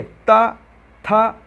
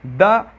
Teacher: आप मेरे साथ बोलिए ता, था, आप बोल के देखिए द, यहाँ पर जो आपकी जीभ है वो दांतों पे सपोर्ट कर रही है, मतलब जो दबाव बन रहा है वो दांतों पर पड़ रहा है।